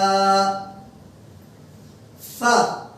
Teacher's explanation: নিচের ঠোঁটের পেট উপরের দাঁতের আগার সঙ্গে লাগিয়ে বাতাস বেরিয়ে যাবে